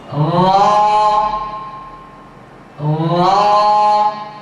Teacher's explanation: এই হরফটি উচ্চারণগতভাবে এখন মোটা হচ্ছে। জিহ্বার আগা, পিঠ একেবারে উপরের তালুর সঙ্গে লেগে যাবে।